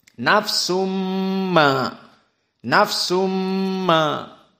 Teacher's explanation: kalau bigunnah keluarnya dari hidung, khaisum. Dan 2 harokat.